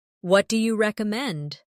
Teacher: Notice how do you becomes dia in casual conversation.